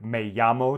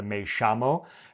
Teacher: they of course change the double L to an SH sound